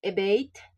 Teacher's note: the stress is on the second syllable because it is a verb